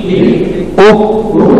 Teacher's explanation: آواز بند ہو اور سانس جاری ہو، یعنی اس میں حمس ہے اور شدت ہے، حمس کی وجہ سے سانس جاری ہوگی اور شدت کی وجہ سے آواز بند ہو جائے گی۔